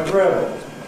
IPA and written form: əˈgrɪəbl̩ (agreeable)